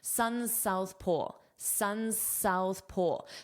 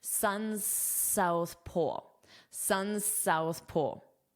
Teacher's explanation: So, I would only pronounce one S. But when you do that, you can't take a pause between the words.